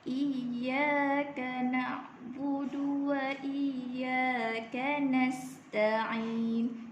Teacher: ya yang pertama ni mad asli baca dengan ada 2 harakat.